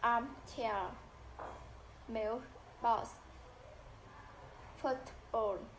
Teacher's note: In compound noun, both components, both words are stressed.